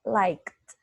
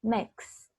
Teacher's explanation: We just add ed. And here you have T because it's voiceless. No vibration.